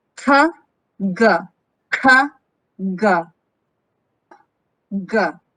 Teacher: So these are both velar consonant stops. However, ka is a voiceless consonant, while ka is voiced consonant.